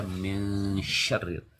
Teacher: Ketika dia samar dengungnya itu dia diletakkan lidahnya kemudian menyebut syin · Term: dengung samar